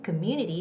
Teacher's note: the second syllable community has the stress